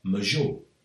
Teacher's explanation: The woman from Alacant said major with the r at the end, whereas the people from Sant Mateu del Maestrat said major without the r